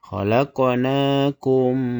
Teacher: Cara bacanya yaitu mim mati dimasukkan ke huruf mim yang kedua. Ini bacanya ditahan dengan dengung. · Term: idgham mimi